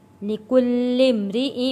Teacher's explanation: لام کے اوپر تشدید ہے، سختی کے ساتھ لام کو ادا کرنا ہے